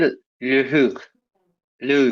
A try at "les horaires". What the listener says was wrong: আদিকে les horaires, এইচ তো silent. horaires, horaires, les horaires, হ্যাঁ? horaires, right.